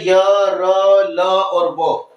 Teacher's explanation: ऐसे व्यंजन जिनका उच्चारण करते समय जिह्वा मुख के किसी भी स्थान को पूरी तरीके से स्पर्श नहीं करती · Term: अंतस्थ व्यंजन